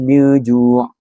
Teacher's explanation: Dalam ayat ini terdapat hukum tajwid sebagai contohnya ifat hakiki yang terdapat pada perkataan miju, iaitu huruf nun sukun bertemu dengan huruf jim. Ia perlu dibaca dengan dengung dan dipanjangkan dengan 2 harakat.